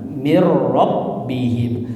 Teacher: Annahul haqqu mir rabbihim idgham bila gunnah. Jadi bila ya tidak gunnah maka nunnya melebur masuk ke ro, tidak gunnah jadi mir langsung ya.